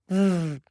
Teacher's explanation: We begin with a V sound. To make the V sound, you bring the bottom lip to the top teeth. You release air with sound.